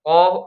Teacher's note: Jadi kalau kita mengucapkan qo ya itu pangkal lidahnya naik ya. Jadi pangkal lidah atau bagian belakang lidahnya itu dinaikkan tuh. Kemudian ee makhraj yang sebenarnya ya ditempelkan juga gitu ya. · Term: istila, isti'la